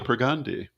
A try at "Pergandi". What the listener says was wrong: It's actually Pergandi. It's a long A.